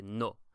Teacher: you'll notice it's a little shorter than in English a little shorter a little rounder so you would say no in English we say no and · lips moving to distort the sound not the case in Spanish it's a very short very almost monotone I would say sound it's just a single sound